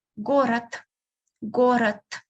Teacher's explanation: So you can hear me pronouncing t instead of d because it is the last letter.